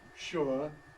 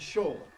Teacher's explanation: I represent an earlier generation halfway between ʃʊə and ʃɔː, which means that sometimes I go one way, sometimes I go the other.